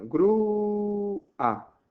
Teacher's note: La fuerte, la tónica, está en la vocal cerrada. Por lo tanto, se separa. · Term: hiato